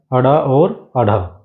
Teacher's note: तो आपकी जीभ पहले का मुर्धा का स्पर्श करेगी और फिर झटके के साथ आपकी नीचे आएगी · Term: ताड़न जात व्यंजन